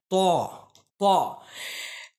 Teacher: ता का जो मखरज है वो ये है के जबान की नोक यानी नोके जबान और ऊपर के जो दांत हैं ठीक है ऊपर के जो दांत हैं उसके जड़ से मिलकर त अदा होता है